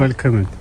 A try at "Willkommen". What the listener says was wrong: Vel. C'est le W prononce Vel. Willkommen.